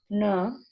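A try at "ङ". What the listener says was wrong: Nasal. Throat plus nasal. So you have difficulty in uttering this nasal. Na is guttural plus nasal.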